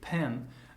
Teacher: there's this small puff of air after I pronounce the consonant, and before the vowel kicks in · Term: aspiration